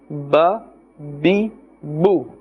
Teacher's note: its makhraj is that the wet part of the lips must touch